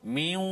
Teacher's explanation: Contohnya kita tengok pada ayat yang ke miwal, ayat yang ke-11 surah yang ke-13, ayat yang ke-11 kalimah nun mati bertemu dengan waw. Miwal, hilang bunyi nun, pergi mana? Masuk dalam waw. Miwal berserta dengan dengung 2 harakat.